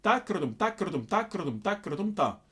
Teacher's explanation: you might have noticed that I'm slightly rolling my tongue in the takidatom. I'm using takardum, takardum, takardum, takardum, ta. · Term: rolling R